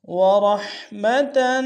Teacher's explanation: ہا گہرائی سے ادا کریں گے